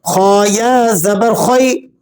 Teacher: یا لین ہے اس کو آپ نے کھینچنا نہیں ہے نرمی کے ساتھ پڑھنا ہے